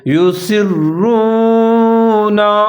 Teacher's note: آگے لفظ اللہ اس کو موٹا کر کے پڑھنا ہے، ان اللہ یعلم، عین کو عین ساکن ہے، یا کے ساتھ ملا کر پڑھنا ہے، یعلم ما یسرون، سین کے ساتھ را کو ملا کر پڑھیں گے، را مشدد ہے اور مضبوطی کے ساتھ پڑھیں گے